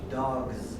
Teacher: When we put an S on this sound, it's not a s, it's a z.